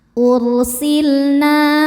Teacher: lam sukun tidak menghadapi lam atau ro dibacanya jelas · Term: lam mutlak